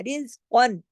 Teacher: پوری تنوین ہم نے ادا کی لیکن کاف کو موٹا پڑھنا ہے